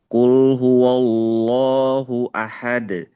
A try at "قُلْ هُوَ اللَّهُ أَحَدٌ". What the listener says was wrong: Nah, di wa-nya jangan Allah. Qul huwa wa-nya di sini jangan tebal. Qul huwallah.